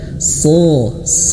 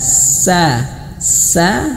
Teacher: Shad ya huruf Shad ucapkan sama seperti Huruf Sin ya karena Shad ini sama seperti Huruf Sin ya makhrajnya sama tapi yang membedakan itu adalah tebal dan tipis